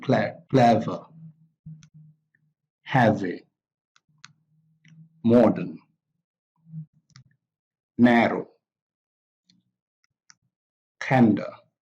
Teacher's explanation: two-syllable adjectives also have a strong stress on the first syllable and a weak stress on the second syllable